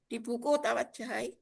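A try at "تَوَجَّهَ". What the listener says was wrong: Oh, yang lebih tepat tawajjah, sukun. Ma'tuf ke soli tadi. soli, sholatlah ke atas. Nah, kan ini kan soli, sholatlah engkau.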